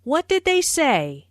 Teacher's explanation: Notice how say is emphasized, but the intonation falls at the end of the word. This is a what question, so the intonation falls at the end.